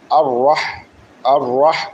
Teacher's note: আমরা এই হাটাকে মাখরাজ অনুযায়ী উচ্চারণ করব গলার মাঝখান দিয়ে।